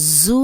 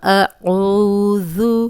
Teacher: سیٹی کی آواز نہیں آئے گی، زو نہیں پڑھیں گے